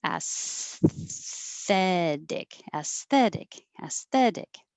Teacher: So as I'm pushing air for my S, I keep pushing air as I push my tongue further forward. So I just move from the S to the TH by keeping the airflow moving and keep my tongue loose between my teeth so that it doesn't stop the airflow.